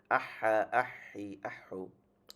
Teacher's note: 2 number মাখরাজ হলকের মাঝখান থেকে আইন হা